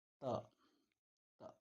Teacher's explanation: ತ ಹಲ್ಲುಗಳ ಬಳಿ ಹುಟ್ಟತಕ್ಕಂಥದ್ದು ನೋಡ್ತೀವಿ. ಹಾಗಾಗಿ ಈ ಒಂದು ಅಕ್ಷರಗಳನ್ನು ದಂತಾಕ್ಷರಗಳು ಅಂತೇಳಿ ಕರಿತಕ್ಕಂಥದ್ದು ನೋಡ್ತೀವಿ.